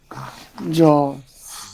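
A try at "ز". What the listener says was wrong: যা, জ হবে না, কি হবে, যা। সিন টান হবে এর মধ্যে, সিন, সিন। সিতে টান হবে, সি। নুনে গিয়ে থামবেন, না, এটা সিন না, দুইটাই সিন হলে তো দরকার নেই তো। দেখেন, একটা সিন, একটা হচ্ছে শিন, তালে বসা থেকে, শিন, শব্দ আসবে এখান থেকে, জিহ্বার মধ্যখানটা টালুতে লাগবে,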